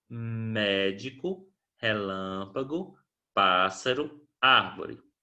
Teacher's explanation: As 4 palavras possuem a antepenúltima sílaba tônica